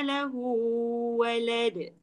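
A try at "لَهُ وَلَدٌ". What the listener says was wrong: Jangan lebih lahu tu.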